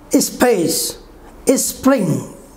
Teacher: Now move to unaspirated sound without extra force, extra puff.